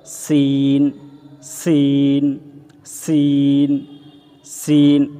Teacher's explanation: এবং এই সিন উচ্চারণের সময় আমরা চার আলিফ টানবো